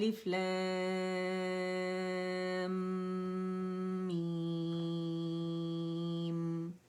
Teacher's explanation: 1 count کے لیے میم کے ساکن پہ گئے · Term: میم کا ساکن